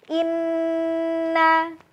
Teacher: Inna ditahan selama 3 ketukan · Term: gunnahnya